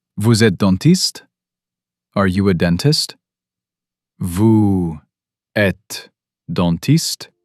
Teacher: That rising intonation turns any statement into a casual question.